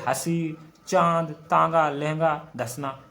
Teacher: इस पे ऊपर चंद्र बिंदु लगाया जाता है, नाक और मुंह दोनों से बाहर निकलती है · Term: अनुनासिक